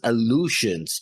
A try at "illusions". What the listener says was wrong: Illusions with an I, not with an A. Illusions, not illusions.